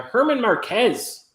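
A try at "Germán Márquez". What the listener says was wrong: Herman. You had the silent G and you mixed up your A's.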